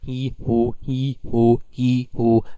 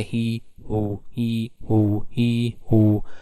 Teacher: your tongue is coming front in the front of the mouth and in who your tongue is going back of the mouth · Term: front and back